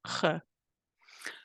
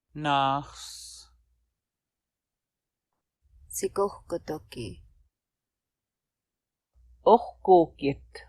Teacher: When it comes after single or double O, or after a single or double A, it is what we call the voiceless velar fricative. Sounds like this g.